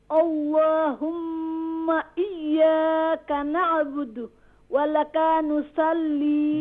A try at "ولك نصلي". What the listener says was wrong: Don't stretch kaf. ولك نصلي.